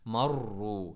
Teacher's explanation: را کو موٹا پڑھتے ہوئے مرو، را کو تھر تھراہٹ بھی پڑھنا ہے اپنے ر کی آواز، مرو یہ اصل آواز ہے. ربی با